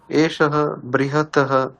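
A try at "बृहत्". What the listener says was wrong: না, বৃহৎ শব্দ হচ্ছে আসলে বৃহৎ, মানে শেষে দেখুন, শেষে হচ্ছে তকারান্ত শব্দ এটা, তাই বৃহৎ। হ্যাঁ, হসন্ত।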